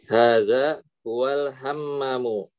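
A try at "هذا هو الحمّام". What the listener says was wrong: Hadza huwal hammamu. Jangan lupa, mimnya panjang. Tasdid juga panjang.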